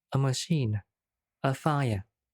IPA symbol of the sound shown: ə